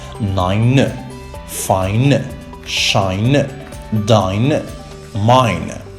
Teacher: the insertion of the schwa at the end of some words